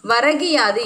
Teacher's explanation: முதல் சொல்லின் இறுதியில் உள்ள கூ என்னும் எழுத்து கீ என்று ஒழிக்கிறது. அதுவும் முழுமையாக ஒரு மாத்திரை அளவில் ஒழிக்காமல் அரை மாத்திரை அளவாக குறைந்து ஒழிக்கின்றது. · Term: குற்றிய லிகரம்